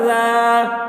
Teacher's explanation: وصاحبتہ وصاحبتہ ذالک، ذال کھڑا زبر ذا، ذال کے اوپر کھڑا زبر ہے، کھڑا زبر برابر ہوتا ہے الف مدہ کے، اس لیے کھڑا زبر کو ایک الف کے برابر کھینچ کر پڑھیں گے